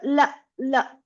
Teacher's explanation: This is a la sound by touching the tongue before the teeth. So la like that la.